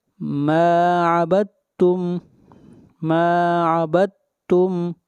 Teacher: ولا انا عابد ما عبدتم ما عبدتم. یہاں پر دال کو نہیں پڑھیں گے، اس لیے یہاں پر ادغام ہو رہا ہے.